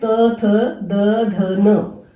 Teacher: सारी लाइन को बोलते हुए हमारी जो हवा है दंत के साथ लगती है, तो इसको दंत उच्चारण स्थान है। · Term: त्वर्ग